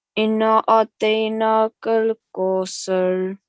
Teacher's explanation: the noon, which has a shadda on it, which means we have to sit on it for 2 seconds, prolong it for 2 seconds, and do a bit of gunna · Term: noon mushaddad